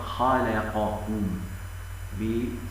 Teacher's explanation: من كلمه خلقكم خلقكم خلقكم ينطقونها خلقكم والصواب خلقكم خلقكم خلقكم باستعلاء حرف الخاء والقاف